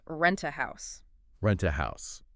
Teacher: the t sound at the end of rent often blends into the a sound that follows it. Sometimes it almost disappears.